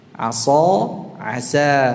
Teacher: Shad dan sin sama-sama dari ujung lidah, samalah makhrajnya ya, tapi cara pengucapannya berbeda. Ya. Asa dengan asa itu beda. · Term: tebal tipis